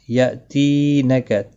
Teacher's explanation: مدہ ہے، ایک الف کے برابر کھینچ کر پڑھیں گے، اور حمزہ ساکن کو تھوڑا جھٹکے کے ساتھ ادا کریں گے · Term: یا مدہ